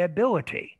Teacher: if you say ability then you don't use a flap you're going to use t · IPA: [əbɪləɾi]